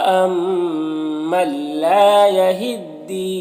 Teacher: نون ساکن کے بعد لام حروف یرملون میں سے تو ادغام تام ہوگا، بغیر غنہ کے پڑھیں گے